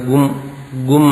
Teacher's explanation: ഇദം ഇദം എന്ന് പറയുന്ന അനുസ്വാരം അതിനെ ഗും എന്ന് ചൊല്ലും വേദത്തിൽ.